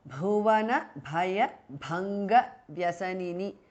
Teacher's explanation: Bhuvana bhaya bhanga vyasanini all together is a compound word. The bhuvana bha, bhaya bha and bhanga bha are all mahapranah.